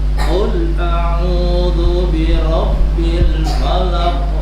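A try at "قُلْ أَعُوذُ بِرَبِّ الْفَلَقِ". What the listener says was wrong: Qul jangan disentak. Qul jangan qul a'udzu birabbil falaq. Haknya lebih jelas.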